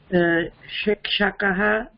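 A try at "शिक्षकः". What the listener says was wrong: No, this is not palate. This is cerebral, retroflex.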